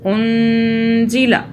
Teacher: نون پہ آپ ہولڈ کریں گے، ناک میں رکھیں گے نون کو 2 سیکنڈ کے لیے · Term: اخفاء